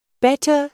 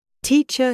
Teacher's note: American English is rotic, meaning they pronounce the R sound at the end of words. British English is nonrotic.